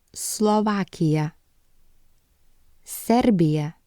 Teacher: it makes a hissing sound S as in Sun